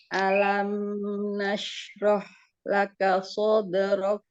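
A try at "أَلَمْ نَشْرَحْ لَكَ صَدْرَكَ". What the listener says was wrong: Ya, yang pertama A-nya jangan diangkat alam, tapi dia ditipiskan. Alam nashrah laka sadrak. Kafnya ada hamas. Hamasnya mana?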